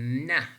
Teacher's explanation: Again, you do perceive that when we are producing na, the blade of your tongue is touching, specifically that very front part of your tongue is touching that alveolar region. So this is also voiced, means that when we are producing na, we perceive more vibration.